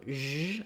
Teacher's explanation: This sound is like the sh sound, except that our voice is on. So zh. I've written it here with the letters ZH. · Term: zh sound